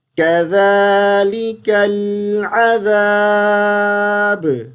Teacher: ذال کو زا نہیں کذالکل نہیں پڑھیں گے · یہاں وقف کر لیں. با کو ساکن کر دیں گے. جب با ساکن ہوگا تو قلقلہ کریں گے